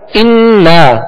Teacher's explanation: غنہ کریں گے. ایک الف کی مقدار غنہ کریں گے اور اس کے ساتھ الف مدہ، اور الف مدہ کے بعد حمزہ دوسرے کلمے میں آ رہا ہے.